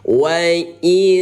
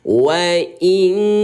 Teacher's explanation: coba bunyi n ayah bunda ubah menjadi bunyi ing ya. Bunyi ingnya ini tahan 2 ketukan. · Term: ikhfa